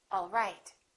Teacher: My pitch goes down at the end for a statement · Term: falling intonation